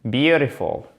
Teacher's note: Le T, lorsqu'il est entre deux voyelles, en American English, souvenez-vous qu'il a tendance à devenir presque comme un de · vous faites bien l'accent tonique sur la première syllabe